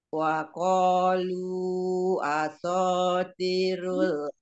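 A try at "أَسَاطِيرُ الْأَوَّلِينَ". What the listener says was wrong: awwalin. Bukan aso, tapi asa. Asa wirul awalin. Dari asa tirul awalin. Dinya dua Umi. Sinnya ada ini ya, sofirnya.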